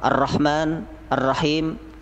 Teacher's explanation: Mad Thobi'i dibaca Dua harokat